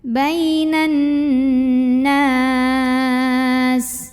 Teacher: Huruf yang disukunkannya adalah huruf sin. Maka kalau berhenti nunnya ini boleh panjang 2, 4 atau 6 harokat asal konsisten dalam sekali bacaan. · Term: mada arid li sukun